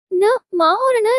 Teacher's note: नर्म तालू को नीचे लाकर उत्पन्न किया जाए और जिसमें मुंह से वायु निकलने पर अवरोध हो लेकिन नासिका से निकलने की छूट हो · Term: नासिक व्यंजन